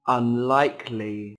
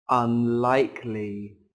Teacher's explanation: có 3 âm tiết trọng âm rơi vào âm tiết thứ hai